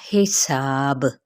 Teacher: حساب، یہاں پہ کیا ہے، سا پہ مد سے بل الف کا قاعدہ، ایک الف یا دو حرکات کے برابر کھینچیں گے، اور با پہ وقف کیا تو وقف بل اسکان ہو گیا، اور ساتھ میں با حروف قلقلہ میں سے بھی ہے